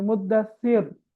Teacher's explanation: ராவுக்கு சுக்கூன் வந்து அதற்கு முன்னால் உள்ள எழுத்து கஸ்ரா வந்தால் மெல்லினமாக ஓத வேண்டும்